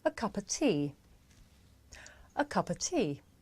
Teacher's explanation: The words a and of become schwa,